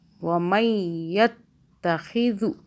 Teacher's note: دال کو سافٹ پڑھیں اور کھینچنا بھی نہیں ہے. کھینچنے کے لیے کوئی حرف نہیں ہے.